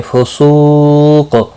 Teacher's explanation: सू वाव मद्दा है, एक अलिफ के बराबर खींच कर पढ़ेंगे। क़ाफ साकिन पढ़ा जाएगा। · वला, ला अलिफ मद्दा है, एक अलिफ के बराबर खींच कर पढ़ेंगे। फुसूक, सू वाव मद्दा है, एक अलिफ के बराबर खींच कर पढ़ेंगे